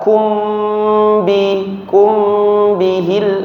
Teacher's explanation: Jangan lupa dengung di mim sukun ketemu ba.